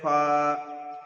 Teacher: নিচের ঠোঁটের ভিজে অংশ এবং সামনের উপরের 2 দাঁতের আগার সঙ্গে লাগিয়ে উচ্চারিত হয় ফা।